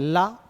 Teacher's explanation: पार्श्विक व्यंजन दोनों पार्श्वों से निकल जाती है